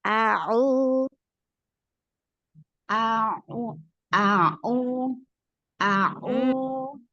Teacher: ee domahnya sudah bagus ya, sudah itmam cuma masih sedikit masuk ke hidung ya Bunda ya.